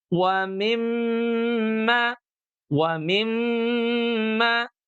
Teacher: Sebelumnya ada kata mi. Nah, dari mi ke mim sukun inilah yang harus ditahan selama 2 ketuk